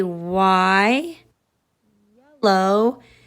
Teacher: y can be a stretchy consonant sound your voice is on it